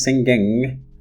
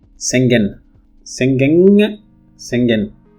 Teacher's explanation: the word singing is to be pronounced singing which is a voiced velar nasal but sometimes this is pronounced as a voice alveolar nasal